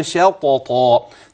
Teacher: الشين الطاء المفتوحة وبعدها طاء أخرى ثانية، فاللسان إذا أتى بالطاء رجع ليأتي بالثانية